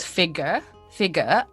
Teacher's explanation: typically like non-rhotic british accents would be without the strong r at the end of this word figure